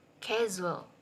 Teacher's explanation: Sound za as in the word casual, in which the blade of the tongue is used